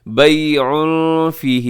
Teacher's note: تنوین کے بعد فا ہے، اخفا کیجیے گا